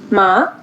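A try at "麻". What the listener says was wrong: हाँ, थोड़ा सा राइज करना है इसको.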